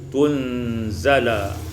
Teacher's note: Kemudian pada ayat yang ke-93 tunazzala, iskanun nun al-mukhaffaf wa takhfifil zai, disukunkan nun dengan ikhfa dan dilepaskan atau tidak menggunakan tasydid pada zai menjadi tunzala.